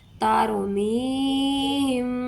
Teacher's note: ہونٹوں کو بند کرتے ہوئے ہم نے یہاں پر گنہ کاملہ ادا کرنا ہے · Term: اخفائے شفوی